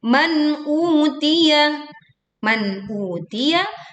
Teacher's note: dibaca jelas nun sukunnya, jelas hamzanya, kan tidak memantul.